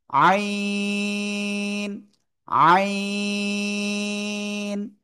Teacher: গলাটা চেপে এক আলিফ, দুই আলিফ, তিন আলিফ, চার আলিফ টানে উচ্চারণ করব।